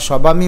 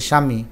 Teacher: শব্দের শুরুতে যদি ব ফলা থাকে তাহলে বর উচ্চারণ হয় না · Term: আদ্য বফলা অনুচ্চারিত